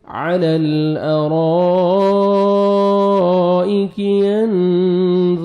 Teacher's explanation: را کو موٹا کر کے پڑھنا ہے اور آگے مد واجب ہے